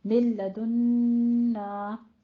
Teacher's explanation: मिल लदुन्ना में नून साकिन का कायदा इदगाम बिला गुन्ना, इसमें गुन्ने की आवाज़ नहीं आएगी